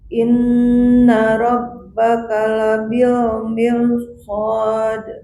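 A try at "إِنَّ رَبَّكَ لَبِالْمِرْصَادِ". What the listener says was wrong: Ya, ra tebal mirsad.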